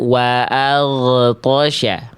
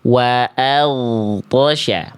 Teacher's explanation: Suara dari huruf ghoin itu sekali lagi bukan dipantulkan, tapi dialirkan, mengalir suara. Dialirkan, bukan dipantulkan.